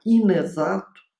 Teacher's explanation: Nós vamos observar o seguinte, que houve um processo de ressilabação. Na palavra inexato, nós temos a primeira sílaba i e a consoante grudou na vogal inicial da palavra exato